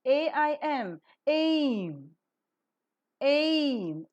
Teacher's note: And so the glide begins at front, unrounded position between half close and half open, and moves to the centralized front, unrounded position just above the half close. The lips are neutral while the glide is pronounced. The diphthong is rising, closing, and a narrow glide.